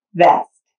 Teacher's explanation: turn your voice on for the vibrating sound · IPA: /v/